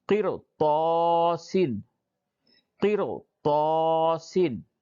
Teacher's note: را ساکن سے ماقبل زیر ہے لیکن اس کے بعد حروف مستعلیہ آیا ہے، اس وجہ سے اس را کو پر پڑھیں گے